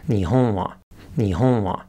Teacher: It starts low, goes high, and goes back down again. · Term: nakadaka